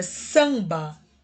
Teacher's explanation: porque o A e o M tem som de A nasal